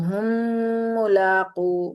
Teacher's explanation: ساکن میم کو ہم نے تشدید والی میم کے اندر داخل کر دیا، مدغم کر دیا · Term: ادغام شفوی